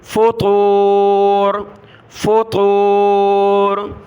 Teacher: یہ بڑی طا ہے, بہت سارے اس کی جگہ باریک تا پڑھتے ہیں نقطے والی پتلا کر کے فطور, وہ تا نہیں پڑھنی, یہ طا ہے.